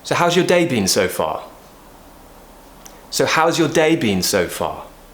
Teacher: an open question we will usually use a falling tone